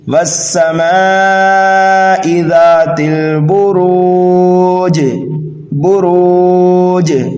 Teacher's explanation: جیم کو جب ساکن کریں گے تو آواز لوٹتی ہوئی معلوم ہوگی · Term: قلقلہ